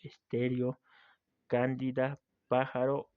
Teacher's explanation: En estas decae el acento prosódico en la antepenúltima sílaba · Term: esdrújulas